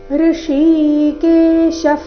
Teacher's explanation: ಈ ಶಬ್ದದಲ್ಲಿ ಮೊದಲು ಷಟ್ಕೋನ ಶ ನಂತರ ತಾಲವ್ಯ ಶ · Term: ಎರಡು ಪ್ರಕಾರದ ಶ